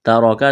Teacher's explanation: تا کو باریک، را کو موٹا کرنا ہے